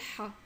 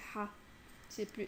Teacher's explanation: Et le 7, c'est un son qui est comme le H mais qui vient aussi, qui est un peu plus aigu, on va dire, qui est le Ha.